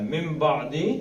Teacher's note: میم پڑھا جائے گا. نون ساکن کے بعد بے آ جائے تو اس نون کو کیا پڑھنا ہے؟ میم پڑھنا ہے.